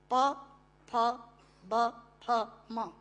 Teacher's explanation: दोनों होंठ मिलाकर बोले जा सकते हैं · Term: ओष्ठांग